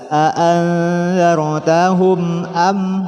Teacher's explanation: Selanjutnya ada mim mati bertemu hamzah, maka dibaca jelas.